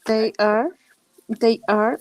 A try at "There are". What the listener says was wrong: Ojo con esto. Esta palabra no se pronuncia they are. Es there are. Es diferente. they are, es ellos son. Hay que tener cuidado con eso.